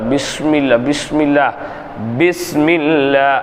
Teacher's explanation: பா சொல்லும்போது இரண்டு உதடுகளும் ஒட்டி அழுத்தி அதனுடைய உச்சரிப்பை வெளியே கொண்டுவர வேண்டும்